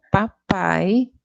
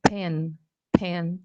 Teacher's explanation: Em português eu falo papai, em inglês eu falo pen, pen. Tem um ar que a gente libera um pouquinho